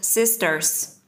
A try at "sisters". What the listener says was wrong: Sisters. No, sisters. Sai, em không đọc cái chữ S ở giữa. Cái này có 3 chữ S lận.